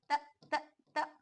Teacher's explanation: यहाँ हमें खुद महसूस करना है कि हमारी जुबान ऊपर वाले दांत की जड़ से लग रही है, तो यहाँ जमाव पैदा हो रहा है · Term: हर्फ ता